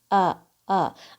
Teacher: اچھا، اس میں حمزہ کی آواز اور عین کی آواز دونوں حلق سے آئیں گی. حمزہ کی آواز حلق کے سب سے نیچے سے آئے گی